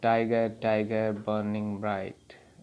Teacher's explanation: टाइगर सेकंड में भी यही, पहला टाई सिलेबल है वो स्ट्रेस्ड है, दूसरा अनस्ट्रेस्ड है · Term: स्ट्रेस्ड सिलेबल